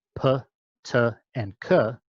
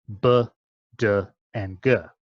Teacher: a voiceless version, p, t, and k, with relatively little vibration, and a voiced version with more vibration, b, d, and g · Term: voicing